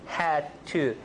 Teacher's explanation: rather than actually considering it as disappearing D, unreleased D, had to, unreleased. But there's definitely linking here.